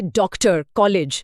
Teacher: यह आ और ओ के बीच की ध्वनि है। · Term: औ की ध्वनि